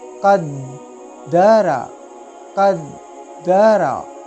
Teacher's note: دال بھی حروف قلقلہ میں سے ہے، اس لیے ہی اس کو بھی جماؤ کے ساتھ پڑھیں گے